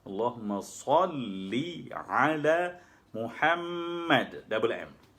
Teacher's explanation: Tak perlu dengung, tapi dua huruf syaddah tu kena diberi haknya.